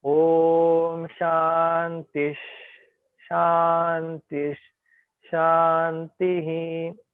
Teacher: when Visarga is followed by sh, like Om Shantish, then Visarga we will pronounce as sh.